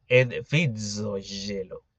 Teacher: una Z que es indicadora del africado alveolar sonoro